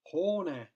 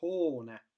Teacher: Hoone nimetavas käändes on teine välde, hoone omastavas käändes on kolmas välde ja hoonet osastav kääne on taas teine välde.